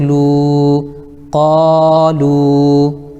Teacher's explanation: واو ساکن سے پہلے لام کے اوپر پیش ہے اس لیے واو مدہ ہوگا، ان کو تھوڑا کھینچ کر پڑھیں، جیسے لام واو پیش لو، قالو۔